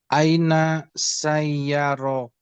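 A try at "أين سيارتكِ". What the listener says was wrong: Tu-nya dibaca juga sayyarotuki.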